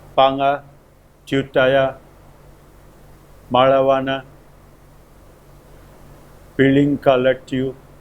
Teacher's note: the primary stress is placed on the leftmost syllable. The secondary stress is placed on the third syllable.